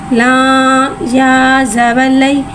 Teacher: या साकिन है, या साकिन से पहले ज़बर आ रहा है, यालीन हो रहा है, लिहाजा यालीन को बगैर खींचे बगैर झटके दिए नरमी से मारूफ पढ़ेंगे।